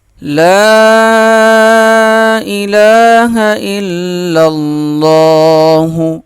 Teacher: لا کو 3 الف کے برابر کھینچ کے پڑھیں گے، الہ 1 الف کے برابر، ہا کو صاف پڑھیں گے، لا الہ الا اللہ، حمزہ اور لام ملیں گے، پھر یہ لام اللہ کے لام سے سختی کے ساتھ ملے گا اور اللہ کا لام موٹا پڑھا جائے گا، 1 الف کے برابر کھینچا بھی جائے گا۔